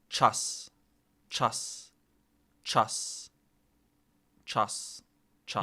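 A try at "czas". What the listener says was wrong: Your vowel is too closed. You're too far back in the mouth. Like, you need to yawn less is how I would explain it.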